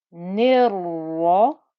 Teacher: I join from the noon with the kasra to the ra with the fatha and shadda. And because the ra has a fatha on it, it will be thick and heavy